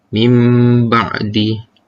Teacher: mengubah atau menukarkan bunyi nun mati menjadi Bunyi huruf mim mati serta ditemukan dengan dua harokat Baiklah itu saja daripada saya seterusnya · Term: iklan-iklan